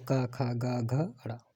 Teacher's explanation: का वर्ग और हा, ये कंठ से बोले जाते हैं